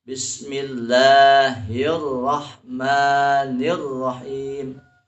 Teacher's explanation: Jadi harus ada menahan suara, ditahan suaranya karena ada syiddah di situ.